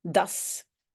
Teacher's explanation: Ici, de nouveau, on a enlevé le T. Normalement, c'est dat is. OK, mais on dit das.